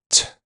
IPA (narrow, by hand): tʰ